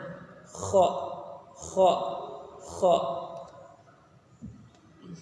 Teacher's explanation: Makharijul hurufnya dari ujung tenggorokan yang paling dekat dengan lidah. Adapun sifat-sifat huruf dari huruf kha yaitu nafas berhembus, hamas.